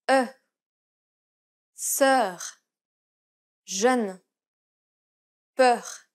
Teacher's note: the lips are rounded and there is no nasality